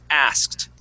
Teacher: when the word ends in a K, like the word ask, that ED is going to make a T sound